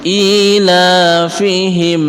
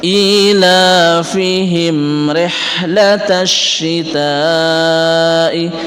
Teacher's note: Ila, kalau kata lanya di sini adalah mad tabi'i. Ila fihim, ada mim sukun, mim mati bertemu dengan ro, itulah idhar syafawi. Kita membacanya dengan jelas. ilafihim rihlatash syita'i, bukan rihlatas syita'i, tapi di sini huruf ha.